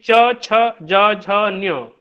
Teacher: हमारी जीवा जाकर के तालु पर टकराती है, और वहां से जो एक ध्वनि निकलती है उसको कहते हैं तालव्य ध्वनि